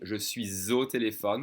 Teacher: I'm supposed to connect that silent S to the next vowel sound, saying je suis au téléphone with a Z sound